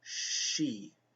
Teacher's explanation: when you say that Sh your tongue yeah goes upwards to the roof of the mouth right like she if you say she you think about where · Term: the SH sound